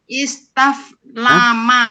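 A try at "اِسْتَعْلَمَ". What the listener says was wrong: Kok taf? Ista'lama lah. Kan banyak ain.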